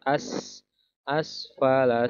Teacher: Rodad nahu as, ada sin dan berharakat sukun, harus ada bunyi angin yang keluar.